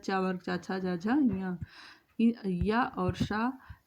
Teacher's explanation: इ और च और य और श ये सभी तालु से बोले जाते हैं